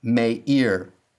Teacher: the short i has lengthened to the long e. This is another pattern of compensatory lengthening. · The ayin has rejected the dagesh forte, and the hirik has lengthened to sere. The short I has lengthened to the long E.